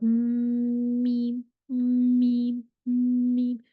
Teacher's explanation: आवाज आपको nasal cavity से निकलती हुई खुद महसूस होगी। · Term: गुन्ना